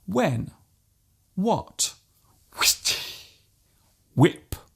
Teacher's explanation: There is actually no need to pronounce the H so strongly. Just let the sound leave your lips naturally.